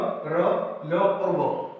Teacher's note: जब हम इनका उच्चारण करेंगे तो ऐसा लगेगा जैसे ये आपके स्वर भी है और व्यंजन भी है। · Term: अर्धस्वर